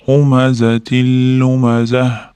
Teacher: Humazatida ham shunaqa, mana tayda qing'ir tanvin kelyapti, ya'ni kasralik tanvin. Lamga harfiga yo'liqqanligi uchun idg'om bo'lyapti, g'unnasiz idg'om.